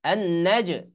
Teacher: এই জিম হলো কলকলার হরফ, এই জন্য একটু লাফিয়ে উঠবে।